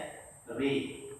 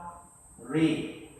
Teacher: Maka ro yang berbaris fathah ni wajib dibaca condong ke arah kasrah.